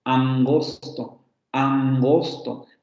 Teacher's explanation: luego tenemos una nasal velar por ejemplo nasal velar